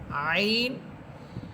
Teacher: আইন কন্ঠনারীর মধ্যখান থেকে বলবেন